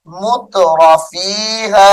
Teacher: تو کے ساتھ نہیں تا کے ساتھ پڑھا جائے گا باریک کر کے